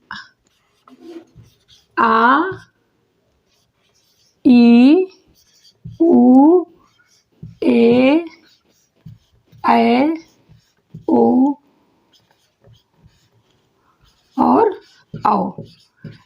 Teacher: दीर्घ स्वर वर्ण बोलते हैं, तो इसमें हमें एक मात्रिक वर्णों का लगभग दुगुना समय लगता है। इसलिए इसे जो है दीर्घ स्वर वर्ण कहते हैं।